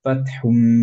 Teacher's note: হুম পড়ছি এবং মিমটাকে ধরে রাখছি বিকজ অফ গুন্না, রাইট। সো পড়বো ফাতহুম।